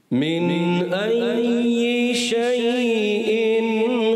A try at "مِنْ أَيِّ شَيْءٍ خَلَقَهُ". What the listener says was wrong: شَيْءٍ حمزہ کو واضح بھی کریں ماشاءاللہ اچھی کوشش کی